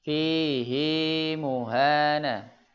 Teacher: dibaca panjang dua harakat walaupun sebelumnya ada huruf mati